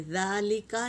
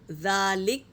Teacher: من اجل ذالک، وقف جائز کی نشانی ہے، تو یہاں پر ہمیں رکنا ہے نا، تو وقف کر رہے ہیں تو کاف کو ساکن کر دیں گے